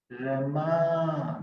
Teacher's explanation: If it is a girl's name, Rama. The second syllable is stressed. We can't say Rama.